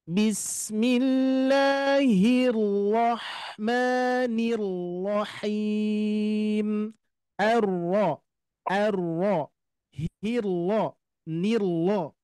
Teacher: Kalau ro tebal ini pangkal lidah kita mengangkat.